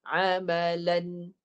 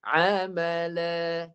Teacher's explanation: Baris kedua tanwin ganti dengan huruf alif. Panjang 2 harakat. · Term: mad iwad